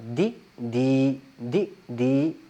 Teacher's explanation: اور یہ یا جو مدہ ہے اس کو ہم نے کیا کرنا ہے، صرف 2 الف کی بمقدار کھینچنا ہے، مطلب بہت لمبا نہیں کرنا، صرف تھوڑا سا لمبا کرنا ہے حرکت کی بنسبت۔ مثال کے طور پہ اگر ہم دال زیر دی کہیں تو اس وقت اس کو صرف دی پڑھیں گے، لیکن جب دال یا زیر پڑھیں تو دی تھوڑا سا لمبا، دی دی دی دی، اور ان دونوں میں فرق کرنا ہے۔ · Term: یا مدہ